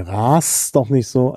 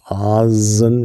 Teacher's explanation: Ras, das sehen Sie, ist im Auslaut und ist stimmlos. Rasen, stimmhaft.